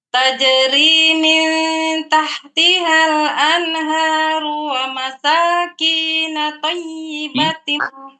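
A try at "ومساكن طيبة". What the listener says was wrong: Huruf kaf pendek. Wa masakina.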